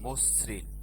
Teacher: আদ্য অয়ের পর ঋকারযুক্ত ব্যঞ্জন বর্ণ থাকলে সেই আদ্য অ এর উচ্চারণ ওকার হয়